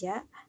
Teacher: menyentuh tengah-tengah lidah dengan langit-langit dan tidak ada nafas yang mengalir